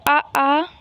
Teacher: अगर हम आ बोलेंगे तो हमारे कंठ पे प्रेशर पड़ता है, यानी गले पे ज़्यादा प्रेशर पड़ता है, तो इन्हें कंठीय कहा जाता है।